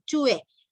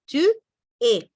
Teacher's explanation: No unimos nada, hacemos una pausa.